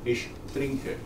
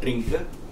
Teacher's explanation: the words beginning with tr in German, the t is soft.